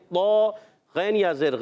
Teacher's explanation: और लित्तागीना, लाम को तौ से मिलाएंगे, तौ अलिफ ज़बर तौ है, मगर यहाँ मुशद्दद, जब भी तशदीद आ रही हो तशदीद वाला हर्फ ज़रा रुक कर अदा होता है, तो यहाँ भी रुकेंगे। लित्तौ, तौ अलिफ ज़बर तौ मोटा रखेंगे